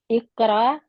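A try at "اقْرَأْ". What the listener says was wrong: आपको हमजा की तरफ झटका देने के लिए कह रही हूँ। रा, आप कह रहे हैं रा,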